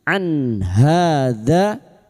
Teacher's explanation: nun sukun bertemu ha idhar halq nun sukun atau tanwin yang bertemu dengan enam huruf ini hamzah ha ha k ain gin termasuk huruf ha maka bunyiun Sukun dibaca jelas tanpa mendengung. · maka bunyi nun sukun dibaca jelas tanpa mendengung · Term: idhar halki